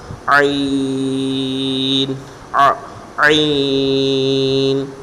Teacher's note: اس کی حلق کے درمیان والے حصے سے یہ ادا ہوتے ہیں۔ عین، اس طرح کی آواز نکالیں گے حلق کے درمیان سے